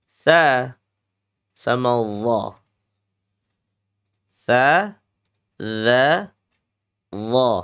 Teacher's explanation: Ujung lidah dia sama-sama menempel ke gigi seri atas.